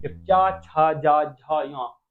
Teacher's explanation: च वर्ण का उच्चारण स्थान हमारा क्या हो जाएगा? तालु से हो जाएगा।